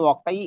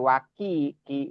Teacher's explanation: ini masalah makhraj, qafnya waqi, jangan sampai waki ki ya, jadi kaf ya